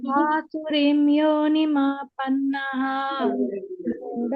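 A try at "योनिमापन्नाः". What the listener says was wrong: ಮಾಪನ್ನಾಃ ದೀರ್ಘ ಇದೆ.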